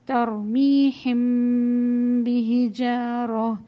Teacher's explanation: تو یہ میم ساکنہ کے بعد جب بھی حرف با آئے گا تو اس کی ادائیگی غنے کے ساتھ ہوگی اور میم کو تھوڑا سا چھپا کر غنہ کیا جائے گا · اور اس کو ہم اخفا کے ذریعے سے یعنی کہ اس کو ہونٹوں کو اس طرح سے بند کریں گے کہ وہ میم اور با کی درمیانی آواز ہوگی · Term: اخفا شفوی